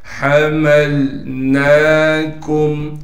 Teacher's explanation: حمزہ کو بغیر کھینچے اور بغیر جھٹکے کے پڑھنا ہے۔ حَمَلْنَاكُمْ، ہا کو صاف کر کے گلے سے نکالیں گے · لام سے ملا دیں گے، اس لیے کہ لام ساکن ہے، نون پر کڑا زبر ہونے کی وجہ سے نون کو ایک الف کی مقدار کھینچیں گے